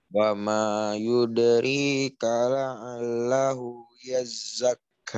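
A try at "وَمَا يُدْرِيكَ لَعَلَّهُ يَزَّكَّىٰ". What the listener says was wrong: Masya Allah, bagus.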